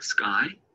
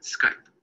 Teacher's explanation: Skype shortens the sound of the vowel.